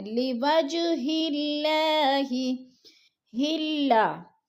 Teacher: جیم حروف قلقلہ میں سے ہے اور ساکن ہے تو ہم نے جیم کو ہلا کر پڑھنا ہے